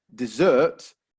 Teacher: if we stress the second syllable dessert then suddenly we have something that you eat